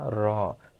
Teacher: র উচ্চারণ করার সময় এই আলজিভ কম্পিত হয়, সেই কারণে এটাকে বলা হয় কম্পনজাত ধ্বনি।